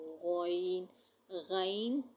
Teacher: غین، غین، غین ہم ادا کرتے ہیں، یہ لفظ غلط ہے۔ غین حلق کے شروع سے جو منہ کی طرف ہے وہاں سے غین نکلتا ہے